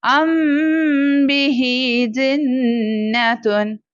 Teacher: یعنی ہم غنہ خفیف کریں گے، آواز ناک میں چھپا کر غنہ کریں گے، خفی کریں گے، اخفاء کریں گے، یعنی غنہ کریں گے 2 سے 3 حرکت کے برابر ہم یہاں پر ٹھہریں گے۔ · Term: اخفاء شفوی